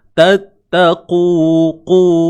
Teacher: Tebal. Huruf qaf baris depan tebal selamanya.